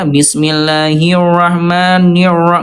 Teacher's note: huruf rnya dia hilang enggak jelas ya